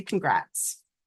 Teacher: in the short congrats, the T is very pronounced. So remember that there is a T.